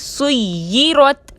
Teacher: سُیِّرَت میں یا مشدد کو مضبوطی اور دباؤ کے ساتھ ادا کریں گے، اس کو سُیِّرَت پڑھنا درست نہیں، سُیِّرَت۔